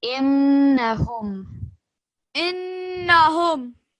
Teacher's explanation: Because this is a noon with the shadda, you're going to produce that nasal sound and you're going to hold it for 2 seconds.